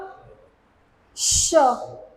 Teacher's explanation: श घर्षण होतय एक हलकासा हवेचा फोर्स जाणवतो जिभेवरती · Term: घर्षक